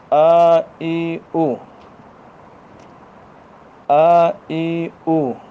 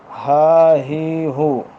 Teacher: حلق کا وہ پچھلا والا حصہ جو سینے کی طرف والا ہے، جہاں سے آپ سانس بند کرتے ہیں وہاں سے وہ مخرج شروع ہوتا ہے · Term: اقصائے حلق